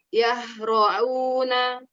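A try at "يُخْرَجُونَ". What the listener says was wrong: Jangan au. Itu nyampur sama hamzah, Mi. Belum turun dia. Yukhra'u, au, yukhra'una. Hati-hati di huruf kho, kadang dia menipis ya. Maksudnya nggak nipis, jadi tipis banget enggak, tapi kurang tebal dikit.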